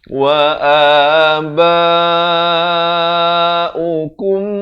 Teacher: Di sini mim mati bertemu mim. Idgham mislan saghir dipanjangkan dan didengungkan kadar 2 harakat. Wa aba'ukum di sini ikhfa.